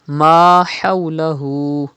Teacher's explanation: Pronounce Ha from the middle part of your throat.